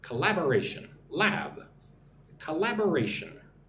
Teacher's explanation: five syllables, but the emphasis on the second syllable